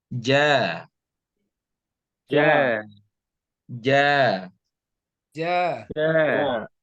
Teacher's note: sifatnya adalah jahar sehingga tidak ada mengalirnya nafas